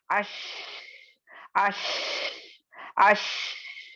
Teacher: तो इसी को ये फैलने को ही इसकी ये सिफत है, इसकी ये स्पेसिफिक क्वालिटी है, कि जब आप शीन को अदा करेंगे तो शीन की आवाज या हवा आपके मुंह में यानी फैलेगी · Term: तफशी